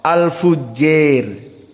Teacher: qiraah dari al-qisai alimalah alkubro lebih mendekati kepada kasrah